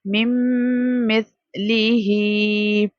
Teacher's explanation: ہم نون کو ہجے کرتے ہوئے پڑھیں گے لیکن ساؤنڈ میں ہم نون کو سکپ کر دیں گے کیونکہ میم اور میم مشدد ہے تو ہمیں وہاں پر غنہ کرنا ہے اور ادغام کرنا ہے بت غنہ.